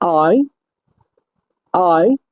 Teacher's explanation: অর্থাৎ আই আই ধ্বনিটির place of articulation হচ্ছে back of tongue টু front of tongue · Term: দীপথং